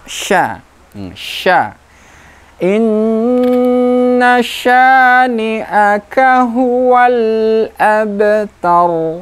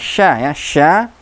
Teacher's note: Makhrajnya tengah lidah diangkat ke langit-langit. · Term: huruf sya